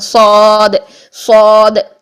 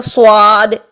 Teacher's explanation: آپ آ کی ساؤنڈ رکھیں گے، صاد خود بخود موٹا ہو جائے گا